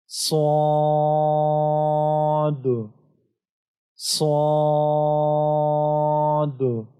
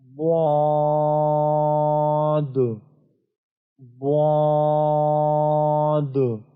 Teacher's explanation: یہ دونوں حروف موٹے حروف ہے، اس کو پر پڑھنا ہے، اور اس کے علاوہ آپ نے ان دونوں حروف کو 3 سے 5 سیکنڈ کے لیے لمبا بھی کرنا ہے۔